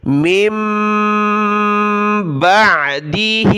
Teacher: قومی ہی من بعدہ، یہاں دیکھیں چھوٹی میم ہے، یہ نون ساکن ہے، نون ساکن کے بعد با آ جاتا ہے تو وہاں چھوٹی میم آ جاتی ہے، بڑی میم کو چھوٹی میم کے ساتھ ملائیں گے، ناک میں آواز پیدا ہوگی۔ من بعدہ، بعدی، با عین زبر با، دال زیر دی، بعدی، عین نکالیں گلے سے۔